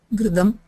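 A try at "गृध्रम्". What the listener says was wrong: Gridram. Gridram. No, the Gritam is ghee. Gritam. The Gritam. This is Gridram. You flip them, Alpaprana Mahaprana has been flipped. In Gritam, the Prathama is the Mahaprana, then the Takara is the actually there, I'm sorry.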